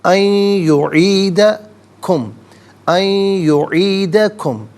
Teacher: ان میں نون ساکن ہے، اسے یعیدہ کے یا کے ساتھ ملائیں گے، یا کی آواز کو غننے کے ساتھ ادا کریں گے